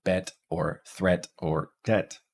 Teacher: our mid-front unrounded LAX vowel is the e sound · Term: Epsilon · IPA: [ɛ]